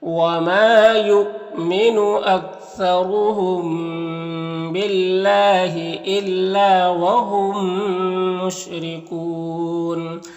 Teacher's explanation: میم کو میم سے ملا کر غنہ کے ساتھ پڑھیں گے. اس کو ادغام شفوی کہتے ہیں. · اللہ کے لام سے پہلے با کے نیچے زیر تو اللہ کے لام کو باریک پڑھیں گے